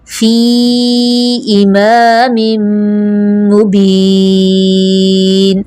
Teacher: فی کو کھینچیں گے اس لیے کہ یا مدہ ہے